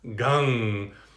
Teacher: the M with the dot is this nasally sound, more of like an NG than an M sound that's ending at the lips